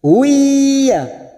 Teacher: Harokat duma tanwin bertemu ya idgham bi gunnah. Siap masuk ke huruf ya. Huiya. Kita tahan selama 3 harokat.